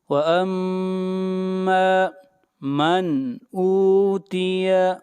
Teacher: نون کو ظاہر کر کے پڑھیں گے، اس لیے کہ نون ساکن کے بعد اگلا حرف حمزہ ہے، اور حمزہ حروف حلقی میں سے ہے، اس لیے یہاں پر اظہار حلقی ہوگا.